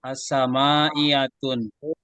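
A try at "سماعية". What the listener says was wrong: Jangan dikasih tanwin ya.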